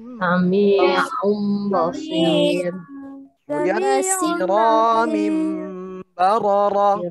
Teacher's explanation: Apabila nun sukun atau tanwin ya, bertemu ba, maka dibalik atau ditukar menjadi mim bacaannya, ya. Itu dengan suara dengung. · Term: iklab